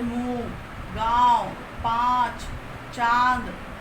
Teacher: जिन स्वरों का उच्चारण करते समय हवा मुख और नाक से दोनों से निकलती है, अनुनासिक स्वर कहलाते हैं।